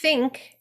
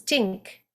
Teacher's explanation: irish think as in the becomes tink